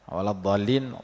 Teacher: da dibaca tebal, kerana dad tebal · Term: huruf tebal